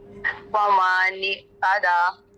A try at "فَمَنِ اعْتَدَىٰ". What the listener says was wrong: نِعْتَدَى کریں گے تو آئین کو ہم حمزہ بنا دیں گے. آئین پڑھیں گے اس میں ڈریگنیس ہوتی ہے. فمن اعتدى